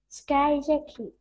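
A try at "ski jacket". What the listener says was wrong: Ski. I remember you repronounce this one as always ski. You always mistake this one as sky, but you pronounce this one as ski.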